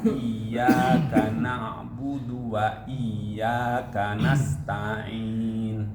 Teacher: suaranya masih sangat terkontaminasi dengan hidung. Jadi seakan-akan suaranya keluar dari dua lubang, mulut dan hidung gitu.